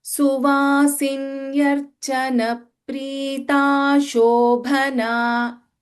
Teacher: we should chant this as Suvasinyarchana Prita Shobhana. No pause after Prita.